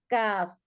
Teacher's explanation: জিহ্বার গোড়া থেকে গোড়া থেকে একটু সামনে এগিয়ে তার বরাবর উপরের তালুর সঙ্গে লেগে উচ্চারিত হয় কাফ